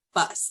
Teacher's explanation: it's going to be um a softer sound in English um you pronounce the b by putting the lips together and if you were to put your hand in front of your mouth there's like a little puff of air that comes out